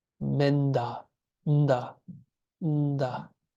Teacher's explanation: Then the prenasal of da is na, because you would say nda. You're already on the teeth. These are dentals.